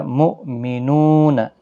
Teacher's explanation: نو واو مدہ ہے، یہاں پر بھی نو واو مدہ ہے، دونوں کو ایک ایک الف کی مقدار کے برابر کھینچ کر پڑھیں گے۔